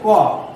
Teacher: ক হচ্ছে অল্প প্রাণ অঘোষ বর্ণ